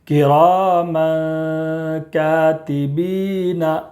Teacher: تنوین کے بعد حروف اخفا کے 15 حروف میں سے کاف ہے، اس لیے تنوین کی آواز کو ناک میں چھپا کر پڑھیں گے